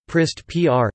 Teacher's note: The alveolar trill (/r/) is syllabic between two consonants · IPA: [ˈpr̩st]